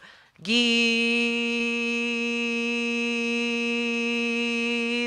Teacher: if you go gee the sound doesn't change means nothing is coming through your nose [Music] great so you feel this thing moving in the back